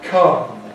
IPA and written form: kʌm (come)